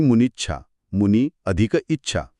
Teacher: या सर्व शब्दांमध्ये दुसरी वेलांटी कशी आली याचं हे उत्तम उदाहरण आहे. 2 ऱ्हस्व ई मिळून त्यांनी एका दीर्घ ईला जन्म दिला आहे.